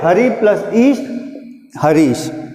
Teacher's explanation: अब यहाँ पर देखिए, एक ई, हरि में ई की ध्वनि ह्रस्व है जबकि दूसरे वर्ण में दीर्घ है, तो दोनों मिलकर दीर्घ ई की रचना करते हैं